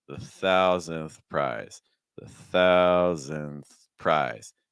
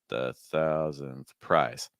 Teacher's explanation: We go up a little bit on pry.